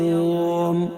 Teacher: حروف لین کے بعد ہم وقف کر رہے ہیں، تو ہم یوم کہہ کر اس کو ہم کھینچ رہے ہیں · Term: مد لین عارض وقفی